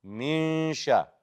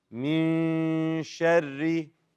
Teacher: You hold the gunna, the nasalization sound, and you prepare for the next letter.